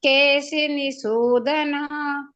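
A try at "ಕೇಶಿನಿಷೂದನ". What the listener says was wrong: Mistake ಇದೆ. ನಿಸೂದನ actually ನಿಶೂದನ.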